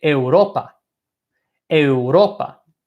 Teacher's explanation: the second last syllable is our second syllable so that is the syllable that we emphasize